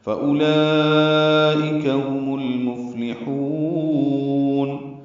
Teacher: ہا کو لمبا کریں گے وسط حلق سے ادا کرتے ہوئے